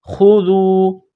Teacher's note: خا کو موٹا کرنا ہے، زال کو باریک کرنا ہے۔